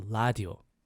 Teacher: because the Korean language doesn't have an R, we don't hear the sound. It's just la. It's L sound